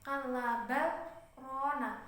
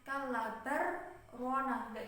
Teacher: karena di sini itu kan ada saktah jadi bacanya dibaca idhar